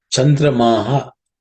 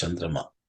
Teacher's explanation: Chandramaha, the visarga gets dropped because of sandhi. That's how it becomes Chandrama.